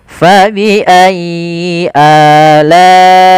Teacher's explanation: Panjangnya untuk mad badal berapa harakat? Yaitu dua harakat.